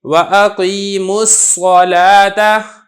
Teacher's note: میم کو براہ راست آپ نے صاد کے ساتھ ملا دینا ہے۔